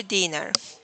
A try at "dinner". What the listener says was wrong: Can you say dinner? Make the E sound shorter? Yeah, dinner, like that.